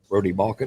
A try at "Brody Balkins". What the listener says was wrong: Brody Balkins. It's got an S on the end.